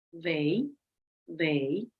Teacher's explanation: they tongue comes through the teeth for the th sound